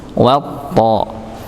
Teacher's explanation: Ya, wanya terlalu tipis, to-nya yang tebal.